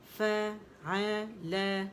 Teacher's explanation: فا ایک کاؤنٹ، آ ایک کاؤنٹ، لا ایک کاؤنٹ